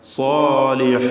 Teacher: ലിമൻ ആമന സ്വാലിഹ ഐന് ശരിയായി മൊഴിയുക വ്യക്തമായി മഹ്റജിൽ നിന്നും ഉച്ചരിക്കുക സ്വാലിഹ സ്വാദിനും അലിഫിനും തഫ്ഹീം കൊടുക്കുക തടിപ്പിച്ച് ഉച്ചരിക്കുക